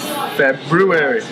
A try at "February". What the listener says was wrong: February. February. It's so silent.